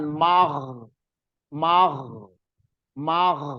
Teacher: huruf Gin Gin itu mengalir tadi enggak boleh ee mandek